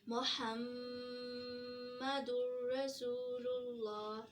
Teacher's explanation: मीम पे तशदीद का sign है और जिसको पढ़ेंगे मुहम्मा, पहले मुहम्मा मीम, फिर नाक में आवाज़ लेके जाएंगे, फिर मुहम्मद, 2 दफ़ा मीम की आवाज़ निकलेगी, मुहम्मदुर रसूलुल्लाह। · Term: गुन्ना